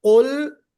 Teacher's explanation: قاف نکالتے ہوئے ذرا سا کوشش کرنا اندر سے نکالنا ہے. تو اندر سے جب ہم نکالنے کی کوشش کریں گے تو وہ سافٹ پیلٹ میں ٹچ ہوگا